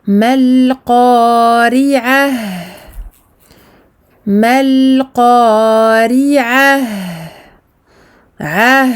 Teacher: nous lui donnons un zaman, une durée longue, à ce ha sakin, car il a cette caractéristique de la rakhawah, l'écoulement du son.